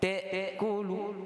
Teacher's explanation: Hamzah ni kat mana keluarnya? Di halqi yang bawah sekali.